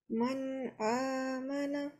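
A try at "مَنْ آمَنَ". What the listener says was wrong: So this one, it sounded like you prolonged it a little bit more than it should have been. So don't say man because it's not noon mushaddad, it's noon sakin. Man amana.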